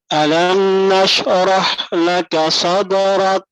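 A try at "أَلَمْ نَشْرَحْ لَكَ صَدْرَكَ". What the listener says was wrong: Jangan diputus. Kalau shin antum putus, antum akan mantul. Jangan alam nash, jangan. Tapi nashrah.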